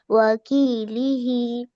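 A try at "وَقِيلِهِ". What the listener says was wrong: آپ اس کو وکیل ہی پڑھیں گی تو ہو جائے گا کاف سے وکیل، جو ہم وکیل وغیرہ جو ہم لگاتے وہی پہ، اور یہاں پہ قاف ہے وقی. ہاں اگر کاف سے پڑھیں گے تو میننگ بدل جائے گا. جو وکیل وغیرہ جو ہم کہتے ہیں وکیل، جو کورٹ میں ہوا کرتا ہے وہی میننگ ہو جائے گا. ہاں وقیلی ہی.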